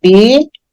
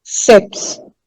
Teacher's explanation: o PS é pronunciado mais rápido e ele faz parte da última sílaba